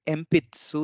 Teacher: तो यहाँ पे देखिए जो एम्पित्सु है यहाँ पे फ और प और स के बीच में ई है, तो ये डिवाइस होना चाहिए था पहले रूल के हिसाब से। लेकिन क्योंकि पी का जो एक्सेंट है, जो पिच है वो सु से ऊपर है, इसलिए ये डिवाइस नहीं होगा